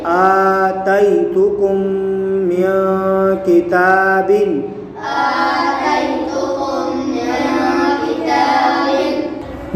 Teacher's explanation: میم ساکن کے بعد دوسری میم آ رہی ہے تو یہاں ادغام شفوی ہوگا، یعنی گنہ کر کے پڑھیں گے۔